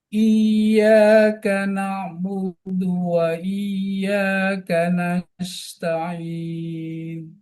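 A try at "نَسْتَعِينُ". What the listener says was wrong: Lebih halus suara sinnya. Lebih halus. Nasta'in. Nasta'in. Dia kalau dibuka nanti lari ke sin dia.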